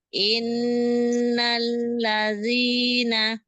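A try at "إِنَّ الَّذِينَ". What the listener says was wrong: Masih ada sedikit. Innal gitu. Langsung tempelkan ke nun, In. Innalladzina. Jadi jangan ambil ancang-ancang in gitu jangan, tapi langsung in. Inna.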